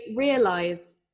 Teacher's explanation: the s sound we don't have so much of a z going on